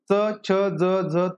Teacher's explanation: तर हे तालु तालु या ठिकाणी या भागातून यांचा उच्चार होतो यांना तालव्य असं पहा म्हटलं जातं